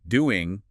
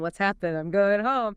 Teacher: very often in casual American speech, The final ing sound, that a sound made at the back of the mouth, gets shortened or reduced to just an n sound in made at the front.